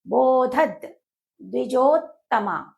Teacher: అని పలుకుతుంది. అస్మాకన్తు విశిష్టాయే తాన్నిబోధత్విజోత్తమ తాన్నిబోధత్విజోత్తమ తాన్నిబోధత ద్వి అనేది సంయుక్తాక్షరం కాబట్టి ద్వికి ముందు ఉండేటువంటి ధ మహాప్రాణాక్షరము మహాప్రాణాక్షరం పైన ఆఘాతం పడుతుంది